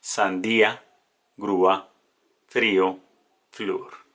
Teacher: Primero la vocal cerrada, que es la que lleva el acento, más la vocal abierta.